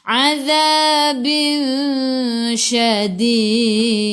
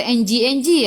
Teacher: Jadi kita dengung 2 harakat, bawa ke sisi huruf. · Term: ikhfa hakiki